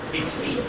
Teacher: The stress on the second syllable here